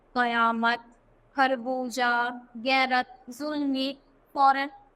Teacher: इनमें फ का उच्चारण स्थान दंतोष्ठ है तथा क ख ग का उच्चारण जिह्वा मूल गले से थोड़ा नीचे है। तो ऐसा लगता है जैसे हम थोड़ा गला तो ये, तो इससे थोड़ा सा नीचे से हम इसको बोल रहे हैं।